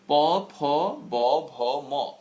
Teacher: যেই ধ্বনিগুলো দুটো ঠোঁট, আমাদের যে দুটো ঠোঁট রয়েছে সেই দুটো ঠোঁট একসঙ্গে লেগে লেগে উচ্চারিত হয়, একটা আরেকটাকে স্পর্শ করে উচ্চারিত হয়। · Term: ওষ্ঠবর্ণ